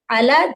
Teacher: عین فتحہ آ، لام الف صغیرہ لا، یہاں پر 2 حرکت، علا جلدی نہیں پڑھیں گے، علا 2 حرکت کریں گے